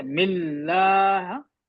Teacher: مل تھوڑا اسٹریس کرنا ہے، ایمفسائز کرنا ہے. ملا جلدی نہیں پڑھنا ہے. تشدید ہے ملا. بسم اللہ رح یہ جھٹکا ہو گیا.